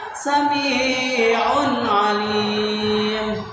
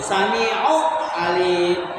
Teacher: Jadi tanwin domah bertemu dengan ain, maka membaca tanwin domahnya itu harus jelas, tidak boleh dengung, tidak boleh samad, tidak boleh dimasukkan. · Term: idhar